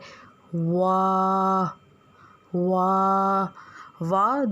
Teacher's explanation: دونوں ہونٹوں کو گول کرنے سے ادا ہوتا ہے